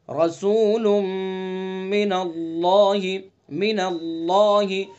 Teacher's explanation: اللہ کے لام کو پر پڑھیں گے چونکہ اللہ کے لام سے پہلے زبر ہے · لام کے اوپر تنوین ہے اور تنوین کے بعد میم ہے تو یہاں غنہ کریں گے، ادغام ناقص ہوگا.